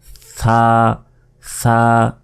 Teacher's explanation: সা, জিহ্বা বের করে, জিহ্বার আগা সামনের উপরের দুই দাঁতের আগার সঙ্গে লাগিয়ে এই সা অক্ষরটি উচ্চারিত হয়। সা সা, জিহ্বা আগেই বের করবেন, বের করে জিহ্বাতে কামড় দিবেন, সা সা।